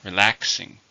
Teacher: It's an adjective. How many syllables? 3, stress is on the second.